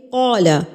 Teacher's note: الف جو ہوتا ہے یہ اپنے ما قبل کے تابع ہوتا ہے، یعنی کہ اس سے پہلے جو لفظ ہوگا اگر وہ پر ہے تو الف بھی پر پڑھا جائے گا، اگر اس سے پہلے باریک ہے تو الف بھی باریک پڑھا جائے گا، یعنی کہ قال، قاف پر پڑھا جائے گا تو الف بھی پر پڑھا جائے گا